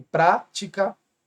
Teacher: proparoxítona porque a anti penúltima é mais forte